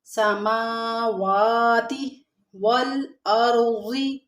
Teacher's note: میم کے اوپر بھی کھڑا زبر ہے، واو کے اوپر، دونوں کو برابر مقدار میں کھینچیں گے۔